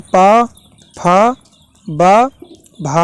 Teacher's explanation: ओष्ठ में पा, फा, बा, भा आता है